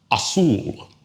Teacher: Ends in an L. So that's outside of our general rule, so stress falls on the last syllable.